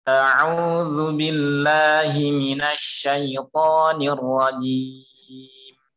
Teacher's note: Shin-nya kurang tafasyi, kurang. Itu masih kayak sin. Minas masih kayak bercampur atau sin dengan shin.